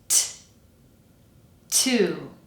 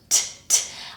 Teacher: It needs to be firmly on the alveolar ridge, and the sound is a little bit tenser with more aspiration than it would be in Spanish. So that means there's like a big puff of air coming out of the mouth when I release the sound.